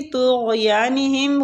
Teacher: غین پہ قلقلہ نہیں کرنا